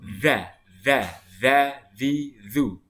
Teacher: kita keluarkan lidah kita dikit supaya huruf dza itu makharijul hurufnya sempurna. Kalau kita tidak mengeluarkan lidah kita dikit, nanti huruf dza akan berbunyi a'udzu.